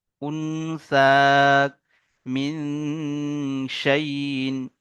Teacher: নুন সাকিনের আওয়াজকে নাকে তুলে এক আলিফ পরিমাণ গুন্না সহ পড়তে হবে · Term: ইকফা